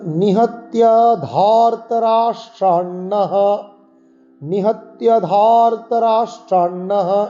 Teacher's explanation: নিহত্য এখানে কিন্তু কোনো দীর্ঘস্বর নেই, আমরা টান দেব না